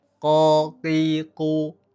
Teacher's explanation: Kalau ko, ki, ku itu tidak ada hembusan udara yang menembak keluar. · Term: huruf qaf